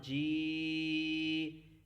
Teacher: جیم کو ہم نے یا کے ساتھ ملانا ہے، زیر کے ساتھ، اور مد بھی ساتھ پڑھنی ہے۔